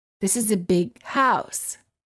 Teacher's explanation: you would hold the G sound of the word big and you would would say this is a big house word